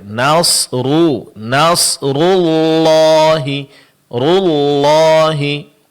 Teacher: Di saat kita mengucapkan nasru, kedua bibir dimonyongkan. Tapi di saat kita ingin mengucapkan huruf lam, bibir kembali ke posisi semula. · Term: baris domah